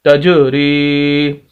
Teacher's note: تا کو جیم کے ساتھ اور جیم پر قلقلہ کریں گے